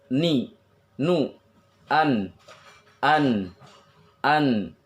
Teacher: ketika membaca huruf nun, maka ujung lidahnya nempel ke langit-langit mulut